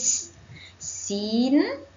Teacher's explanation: pastikan bunyikan bunyi sofir iaitu seperti ular